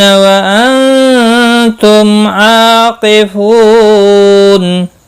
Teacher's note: میم کے بعد عین آیا ہے، اظہار شفوی ہوگا